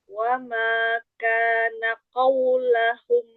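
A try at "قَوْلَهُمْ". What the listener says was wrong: Linnya dilembutkan lagi jangan dinaber. Qaulahum wawnya memang sempurna monyong ya. Tapi jangan dinaber. Qaulahum.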